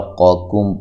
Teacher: قاکم پہلے قاف موٹی دوسری باریک ہے